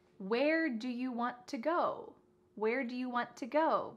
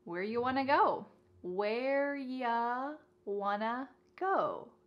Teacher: You becomes ya, and want to becomes wanna. Where ya wanna go? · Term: reduction